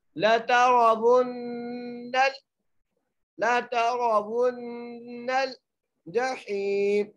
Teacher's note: لَتَرَوُنَّ الْجَحِيمَ، لام کے اوپر زبر ہے، تا کے اوپر بھی زبر ہے، را کو موٹا کر کے پڑھیں گے، واو کو نون سے سختی سے ذرا مضبوطی سے ملائیں گے اور نون کے اوپر غنہ کریں گے. واو کو نون سے ملاتے ہوئے غنہ کریں گے کیونکہ نون مشدد ہے